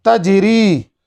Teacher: بچوں، اس کلمے کے اندر حرف قلقلہ جیم پر ہو رہا ہے. جیم ساکن ہے اور جیم پر جو قلقلہ ہے یہ قلقلہ صغرا ہے، یعنی جیم آخری حرف نہیں ہے اس کلمے کا، بیچ میں ہے اور اس پہ ہم رک نہیں رہے ہیں، اس کے لیے یہاں ہم قلقلہ صغرا کر رہے ہیں.